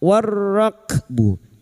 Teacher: lam ta'rif yang bertemu ra idgham syamsiyah